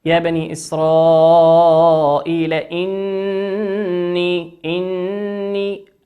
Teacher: النون هنا مشددة تغن بمقدار حركتين